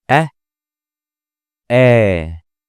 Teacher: Notice that the Alif here is double the duration of the Fatha.